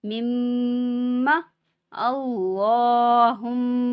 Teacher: ہا میم پیش ہم میم زبر ما مما اللہم یہاں پہ میم مشدد پہ غنہ ہوگا اور اللہ کا لام پر پڑھا جائے گا کیونکہ لام سے پہلے زبر ہے